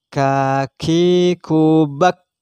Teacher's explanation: Kaf tempat keluarnya ada di pangkal lidah dekat anak lidah. Ada di pangkal lidah, ada di lidah bagian belakang. · Hamz berarti ada hembusan yang keluar, ada desis, maka kaf bukan asal baca kaki kubak, tidak, harus ada nafas yang keluar, ditekan. Kaki kubak, seakan-akan ada bunyi yang keluar setelahnya kaf mati, bak, seakan-akan seperti itu.